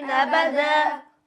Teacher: صوت پر نمیکنین چون همزه هست و همزه باریک هست با باریک هست و دال باریک هست هر سه حروف باریک هست